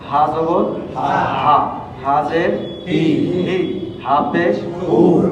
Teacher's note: এই হরফটা উচ্চারণ হবে কণ্ঠনালীর শুরু থেকে।